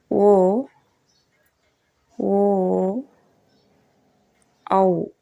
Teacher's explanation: ಕಂಠ ಮತ್ತು ತುಟಿಗಳೆರಡರ ಸಹಾಯದಿಂದ ಹುಟ್ಟುವ ಅಕ್ಷರಗಳಿವು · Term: ಕಂಠೋಷ್ಠ್ಯ ಅಕ್ಷರಗಳು